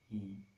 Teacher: Mulut kita dilebarkan, I lebar, I. Dan tidak membundar karena mulut kita lebar, jadi tidak membundar.